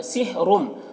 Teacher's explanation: یہاں پر تنوین کے بعد میم ہے، حروف یومن میں سے، تو ادغام ناقص ہوگا، غنہ کے ساتھ میں پڑھیں گے